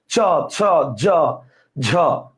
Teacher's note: আর ঘৃষ্ট মানে ঘষা খেয়ে গেছে, যেমন চ, ছ, জিহ্বার উপরের ভাগটা উপরের তালুতে ঘষা খেয়ে গেছে